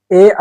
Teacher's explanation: ए ऐ 2 word से मिलकर के बने हुए हैं, आ प्लस ई से, इसलिए इसका कंठ प्लस ताल, तो कंठ ताल से इसका उच्चारण स्थान है, उसका नाम भी कंठ तालव्य है